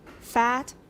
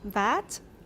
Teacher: The first consonant in the first word of each pair is voiceless. In the second word, it's voiced.